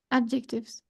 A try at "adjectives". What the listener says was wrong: Without the C, adjectives. Without the adjective.